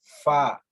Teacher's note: ثنایا علیہ کا نیچے والا حصہ جو ہے وہ ہمارے نیچے والے ہونٹ کے اندرونی حصے سے مل رہا ہوگا